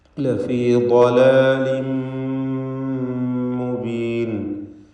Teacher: ളലാലിൻ എന്ന തൻവീൻ, അതിനുശേഷം മീമ്. തൻവീനിനെ പൂർണ്ണമായും മീമിൽ ലയിപ്പിച്ച് മണിച്ചുകൊണ്ട് ഉച്ചരിക്കണം. ഇദ്ഗാം ബിഗുന്ന കാമിൽ.